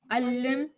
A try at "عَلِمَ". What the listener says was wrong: No, there's no shadda. Alima. Alima. Alima, alima, alima.